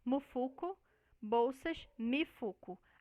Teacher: acréscimo da vogal I depois do M